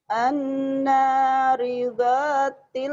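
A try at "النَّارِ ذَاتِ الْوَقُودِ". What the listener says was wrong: Ibu seperti ada unsur O-nya. An-naridha ya. An-naridhatil waqud.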